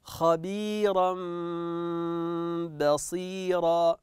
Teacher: هنا تنوين اصله خبيرا وتبعد حرف الباء والباء من حروف نعم من حروف القلب نقلب التنوين الى ميم ثم نخفي هذه الميم